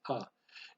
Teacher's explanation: that's the sound that the vocal shva makes. It's a quick ah sound.